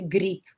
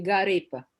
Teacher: in Japanese English, a consonant cannot follow a consonant without a vowel in between. That's why for Russian, it's okay to say grip.